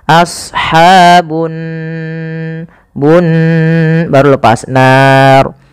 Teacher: Di sini ada gunnah. Pada lafal nun, cara membacanya yaitu ditahan suara nunnya. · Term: ghunah